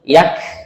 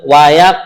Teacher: kalau qof Qalqalah memantul